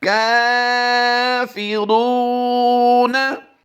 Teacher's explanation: एक है काफ खड़ी ज़बर का, खड़ी हरकत यानी खड़ी ज़बर है, इसको हम लंबा करके पढ़ते हैं एक अलिफ, और रा वाव पे शुरू को भी हम वाव मद्दा होने की वजह से लंबा करेंगे।